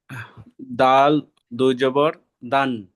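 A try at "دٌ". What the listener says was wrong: ঠিক করে পড়েন। নুনের উপরে দালের উপরে পেশ আছে, দাল নুন জাবার।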